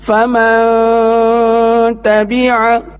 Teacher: نون ساکن کے بعد تا آ رہا ہے، تا حروف اخفا میں سے ہے تو یہاں پر غنہ کر کے پڑھیں گے